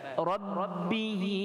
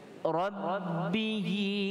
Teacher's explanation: ra dibaca tebal, tafkhim, dan bertemu dengan ba ditasydidkan ba.